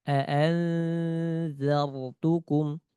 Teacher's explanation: Bertemu zal, contohnya aanzartukum, aanza, aanzartukum. Sa dengan zal sama, ujung lidah dengan ujung gigi seri atas. Disentuhkan.